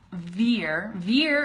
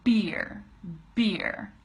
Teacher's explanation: your teeth vibrate against your bottom lip for the V here where as beer your lips close and then you push out all that air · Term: V sound